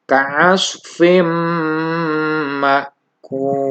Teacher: Dan di ayat yang kelimanya adalah ketika ada tanwin ka'asfin bertemu dengan mim, maka kita idgham bi gunnahkan. Jadi membacanya bukan ka'asfin, tapi ka'asfim ma'kul.